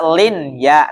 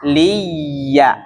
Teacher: Enggak dibaca lin ya, namun liya, langsung masuk di huruf ya-nya